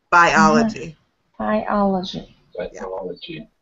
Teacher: So that even though I-O can sometimes be a diphthong, where you combine, for example, this one we're pronouncing each vowel separately, biology. So the emphasis falls on the second syllable